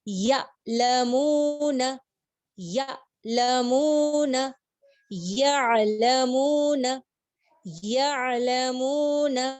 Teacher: عین کے مخرج میں آپ سلولی فلو جائے گا آپ کا, آپ جھٹکا نہیں دیں گے, فلو آپ کا بہت ہی سموتھلی جائے گا.